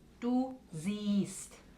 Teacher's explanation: Ese vocal es muy largo y la E no se escucha.